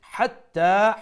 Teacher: ha from the middle of the throat, the big ha as we call it